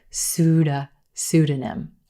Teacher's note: with that but the p is totally silent in this word emphasis on the first syllable